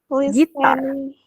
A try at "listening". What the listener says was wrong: Listen. T-nya hilang. Listening to music.